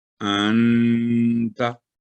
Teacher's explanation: یہاں دیکھیں نون ساکن کے بعد تا ہے تو ہلکا غنہ ہوگا، یعنی فل سٹریس نہیں دیں گے، انتا نہیں کہیں گے. لائٹ غنہ کریں گے تو آپ کے نیزل ساؤنڈ ہوگا، نوز پائپ میں آواز گونجے گی